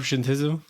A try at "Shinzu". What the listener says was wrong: I forgot that you don't pronounce the T. Yeah, it's kind of like Tsunade Z.